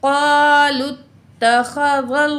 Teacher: लफ्ज़ अल्लाह से पिछला हरफ हरकत वाला ज़बर है, इसलिए हमने लफ्ज़ अल्लाह को मोटा पढ़ना है।